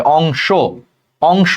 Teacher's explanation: সেই অন্ত অর আগে অনুস্বার আছে, তাহলে এই অন্ত অটা ওকারের মতো উচ্চারণ হবে